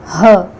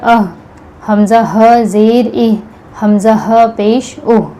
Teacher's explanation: جب ہم ہ بولتے ہیں ہ تو یہاں جو حلق کا سینے کی طرف والا حصہ ہے یہاں پر حرکت ہوتی ہے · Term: ہ کا مخرج